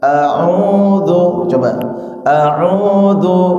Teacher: A itu hamzah. A a biasa baru u itu ain. Ya, kalau a di sini ya paling bawah tenggorokan. Kemudian ainnya itu di tengah.